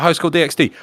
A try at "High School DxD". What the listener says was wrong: You don't pronounce the X.